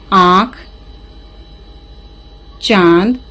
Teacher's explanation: अन, इसे अनुनासिक कहते हैं। इसे बोलते हुए नाक और मुंह दोनों से ध्वनि निकलती है।